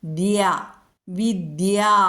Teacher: തവർഗ്ഗത്തിലെ മൃതുവായ ദ എന്ന അക്ഷരത്തിൽ കൂടെ യകാരം കൂടുന്നു